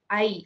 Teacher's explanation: 2 vowel sounds sliding together in one smooth sound